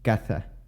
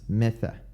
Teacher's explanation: the s the z and the c are all pronounced as theta so they're pronounced with that th sound